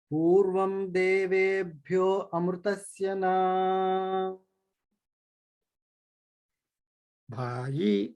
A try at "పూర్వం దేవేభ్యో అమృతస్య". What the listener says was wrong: మీరు భ్యో దగ్గర ఎత్తకూడదు. స్వరం లేదు అక్కడ. అన్ని తార రోడ్లు సమానంగా వెళ్ళిపోవాలి. Don't take break.